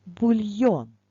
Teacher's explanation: в словах де є буквасполучення йо наголос завжди буде на о